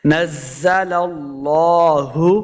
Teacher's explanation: لام کے اوپر کھڑی زبر ہے، اس کو 2 حرکات لمع کریں گے